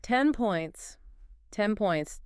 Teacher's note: your brain, anticipating that P, forces your mouth to close early during the N. And an N with closed lips sounds exactly like an M. The physical sound literally mutates. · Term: assimilation